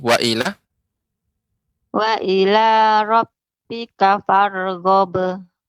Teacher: gho-nya nggak boleh panjang Ibu, langsung farghab. Cepat. Qalqalahnya itu dia pantulan cepat.